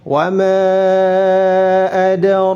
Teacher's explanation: ra ditebalkan di dalam bacaan kita riwayat Hafs An-Asim min Tariq Syatibiyah harus ditebalkan dan dipanjangkan 2 harakat karena ada alif sebelumnya fathah.